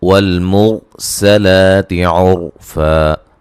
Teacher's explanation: والمرسلات عرفا، یہاں را کو موٹا پڑھیں گے، را ساکن سے پہلے پیش ہے، سلاتی سین کو باریک سیٹی سے، لا مد اصلی ہے، اور را ساکن سے پہلے پیش ہے، را کو موٹا ادا کریں گے